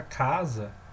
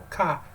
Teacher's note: a palavra casa tem uma sílaba tônica que é o cá